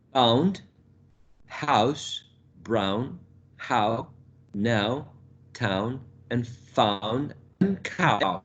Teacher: we go from a low position at the bottom of the oral cavity, high, to where the production of the short oo is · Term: closing diphthong